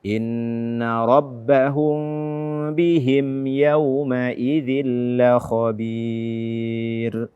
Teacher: Nun atau tanwin setelahnya lam dia adalah idgham tanpa dengung. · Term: idgham bila gunnah